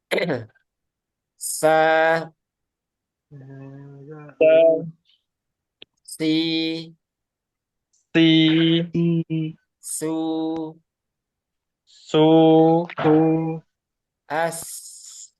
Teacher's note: Desisan dari ketiga huruf ini. Dia akan sempurna dengan adanya sofir.